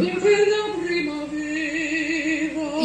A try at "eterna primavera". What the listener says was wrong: You're not thinking of the right vowel. You're not thinking of the correct vowel. It doesn't run better, it doesn't carry better. it carries worse. Clean.